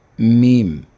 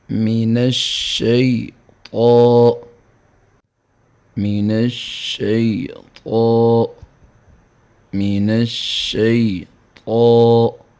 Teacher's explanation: میم، میم ہونٹوں کے خشکی والے حصے سے ادا ہوگا۔